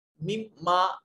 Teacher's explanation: अलिफ खाली अज़ हरकत माक़बल उससे पहले वाले हर्फ के ऊपर जबर है, अलिफ को एक अलिफ के बराबर लंबा करेंगे।